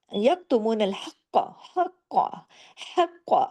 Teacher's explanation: ल यकतुना और फिर आपने यतुन हक्का हक्का ह गले से काफ के ऊपर तशदीद है और काफ को मोटा भी करना है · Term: डबल काफ